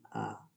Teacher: मध्य स्वर मीन्स जो बीच में होता है ना आगे ना पीछे